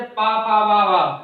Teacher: जब हम बोलेंगे तो हमारे दोनों होठ आपस में मिल रहे हैं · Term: उष्ट